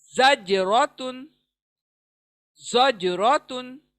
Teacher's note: ज सख्ती के साथ पढ़ेंगे और साथ में ज पे डबल साउंड प्रोड्यूस करेंगे। रॉ पुर पढ़ेंगे। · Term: कलकला